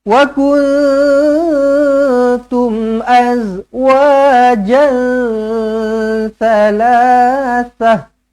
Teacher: Wa kuntum mim mati, izharu syafawi, matikan dengan jelas dan terang.